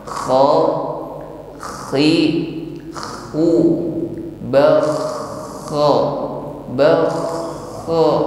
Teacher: huruf kha yang memiliki sifat rakhawah, suaranya harus tetap ngalir, tidak boleh tertahan. Jarayan as-sawt 'inda mururihi fil makhraj.